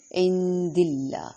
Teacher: اللہ کے لام کو باریک پڑھیں گے زیر کی وجہ سے